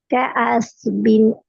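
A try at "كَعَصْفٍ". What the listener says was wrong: விலை ஆயின் வரல. அஸ்பின். சுவாதிர உச்சரிப்பு எடுக்கணும். ஆயின தொண்டையால உச்சரிக்கணும். சின்ன கேக மாத்தக்கூடாது. 3 பிழை. முதல் 3 எழுத்தையும் பிழை.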